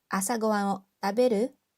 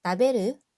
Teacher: we use the dictionary form and then we said it with a rising intonation